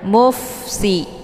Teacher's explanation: Dibaca pendek, kemudian mufsi ada fa sukun, dia sifatnya hamas dan ada desis angin yang agak samar-samar. Jadi cara bacanya dialirkan.